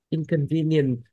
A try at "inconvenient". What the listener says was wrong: Âm đuôi, âm đuôi. Inconvenience.